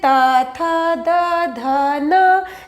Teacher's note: जीवा है वो दांत को स्पर्श करती है इसीलिए इसे दंत वर्ण कहा जाता है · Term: दंत्य वर्ण